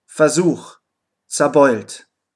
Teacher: Die Vorsilben FER und ZER können auch FA bzw. ZA ausgesprochen werden.